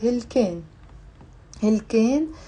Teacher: Notice the alif here in the Lebanese dialect. We sometimes pronounce it as a. You can't really guess when we do it and when we don't.